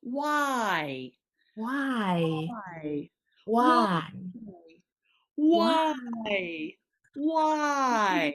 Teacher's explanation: this is a diphthong. So we have the w sound and then a nice long two vowel sounds compressed into one syllable.